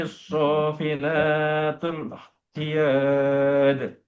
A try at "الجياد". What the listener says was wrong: Kok khiyad? Jia, lagi.